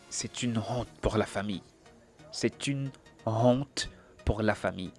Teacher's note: Cependant, pour une petite précision, dans certaines expressions, lorsqu'on veut marquer une certaine précision, on peut faire sentir l'aspiration de la lettre H juste pour mettre un peu plus de précision dans le mot.